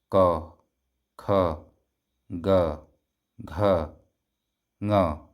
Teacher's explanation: तो जीभ जो है बिल्कुल एक जगह पर स्थिर है और आवाज कंठ से आ रही है।